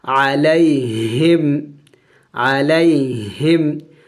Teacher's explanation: ہاں بھی حروف حلقے میں سے ہے اور حلق کے آخری حصے سے ادا کیا جائے گا جو سینے سے ملا ہوا ہے۔